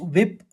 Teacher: श्रुति विप्राते यदा सयति निश्चला समाधा वचला बुद्धिस तथा योगासी एक बार और सुनिए श्रुति विपनाते यदा सयति निश्चला समाधा चला बुद्धिस तदा योग म वाप्सससी अब चरणबद्ध तरीके से इसका उच्चारण भी समझिए। वी व के ऊपर आघात है तो विप फिर प्रतिपन्ना पहले चरण में इस तरह से पढ़ेंगे।